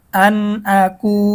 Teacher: নুন সাকিনের পরে ইজহারের হরফ হামজা আসছে গুন্না ছাড়া স্পষ্ট করতে হবে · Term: নুন সাকিনের ইজহার